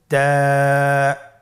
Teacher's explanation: তা হরফটি বারিক হরফ এবং এক আলিফ টেনে পড়তে হবে।